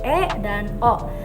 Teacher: vokal tengah yang dibentuk untuk apabila rahang bawah menjauh sedikit dari rahang atas. Contohnya kayak E dan O.